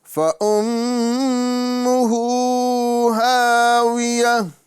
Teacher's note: ہو اور ہا یہ دونوں کو ایک ایک الف کے برابر کھینچنا ہے، کیونکہ ہا کے اوپر یہاں الٹا پیش آ رہا ہے یہ کھڑی حرکات میں سے، اور ساتھ ہی ساتھ ہا کے اندر جو ہے الف مدہ ہو رہا ہے، دونوں کو ایک ایک الف کے برابر کھینچ کے پڑھیں گے۔